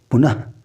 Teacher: इनके उच्चारण में मुख से गर्म हवा निकलती है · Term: विसर्ग